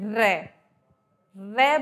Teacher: दांतों के बिल्कुल मूल में लगती है ऊपर वाले दांतों के जहां से दांतों की स्टार्टिंग हो रही है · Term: लुंठित